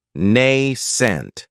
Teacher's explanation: this word has two syllables with the stress on that first syllable